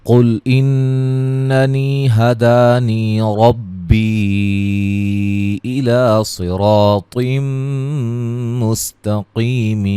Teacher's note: قاف کو موٹا ادا کریں گے، نون مشدد پہ غنہ ہے